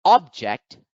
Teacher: the word object, when accented on the first syllable, object is a noun